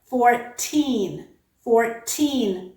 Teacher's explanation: does not change into the flap because the second vowel is stressed · It has vowel, R, T, and another vowel, but this time the second vowel is stressed. So it absolutely does not change into the alveolar flap.